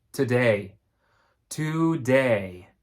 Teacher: a diphthong two vowels next to each other the first vowel is stressed the second vowel is not stressed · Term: diphthongs